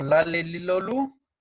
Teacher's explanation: se llama lateral, porque el aire sale por un costado de la boca